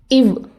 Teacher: இவ் அப்படின்னு சொல்கிறப்ப மேல் பல் கீழ் உதட்டை தொட்டு சின்ன தடை ஏற்படும். அதுதான் பல்லிதழ் ஒலி.